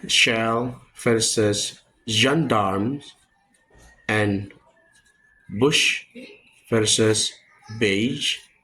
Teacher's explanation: Sh is voiceless, j is voice. Both are post-alveolar fricative.